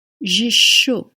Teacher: To be hot translates into avoir chaud. You don't pronounce the D sound at the end, and you pronounce the sh, like in short.